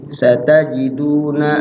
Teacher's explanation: Tidak lama-lama dua ketukan, sekedar di ayun udah mat tabi'i. Satajiduna nah, du dipanjangkan dikit aja, di ayun sedikit sudah mat tabi'i.